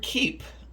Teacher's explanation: And if you can hear that phrase in your throat, the word keep, it starts with that really strong K, and you can almost feel like the sides of your tongue touching your upper teeth at the two opposite sides of your mouth